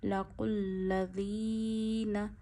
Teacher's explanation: کوئی سا بھی حرف ہو اس کے نیچے زیر ہو، جیسے یہاں ذال کے نیچے زیر ہے، ذال کو نرمی سے پڑھنا ہے اور کھینچنا ہے 1 انگلی جتنا